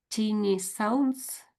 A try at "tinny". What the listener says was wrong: Yeah, tinny. I think you read that out as tiny. So tinny.